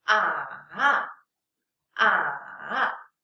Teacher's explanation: If you want to pronounce the third tone fully, it should go from level 2 pitch to level 1 pitch and then up.